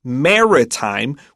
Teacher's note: so pay attention to the word Maritime we emphasize that first syllable